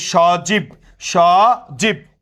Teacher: জয়ের সাথে কি, ই, বয়ের সাথে অ আছে, বাট উচ্চারিত হচ্ছে না